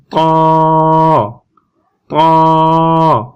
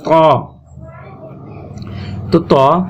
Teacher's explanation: ত উচ্চারণ করার সময় আমরা জিহ্বার যে আগা আছে আগাটা একটু শক্ত করে লাগিয়ে দিব দাঁতের গোড়ার সাথে শক্ত করে একটু ঠেলা দিব সামনের দিকে আর দাঁত দুটো দাঁতের